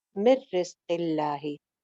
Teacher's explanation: मशरबहुम रॉ मोटी हो जाएगी, कुलू वशरबू, कुलू कु सिंगल हरकत, लू एक अलिफ लंबा, कुलू वशरबू मिर रिज़्क़िल्लाहि, मिर मिन नहीं पढ़ना यहाँ पे, नून साकिन के बाद रॉ है तो यहाँ पे इदगाम हो जाएगा, नून की आवाज बिल्कुल खत्म हो जाएगी, गुन्ना नहीं होगा।